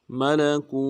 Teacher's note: ادا کرنا ہے، لام کو نون سے ادا کریں گے، ملکو، کاف کو واو کے ساتھ ملانا ہے، واو مدہ ایک مقدار میں کھینچیں گے